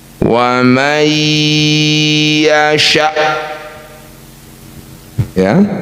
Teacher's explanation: Syiddah itu artinya tertahan. Jadi ketika Hamzah disukunkan sudah tidak ada bunyi atau suara apa-apa lagi. Betul-betul tertahan.